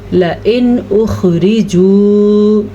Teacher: نون ساکن کے بعد حمزہ آیا ہوا ہے تو نون ساکن کو ظاہر کر کے پڑھیں گے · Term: اظہار